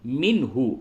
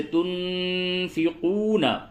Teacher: اظہار ہوگا، مِنْهُ، مِنْهُ، اظہار کا مطلب یہ ہوتا ہے کہ نون ساکن اور تنوین کی آواز کو بالکل ظاہر کر کے پڑھیں، ناک میں بالکل ہی اس کی آواز نہ جائے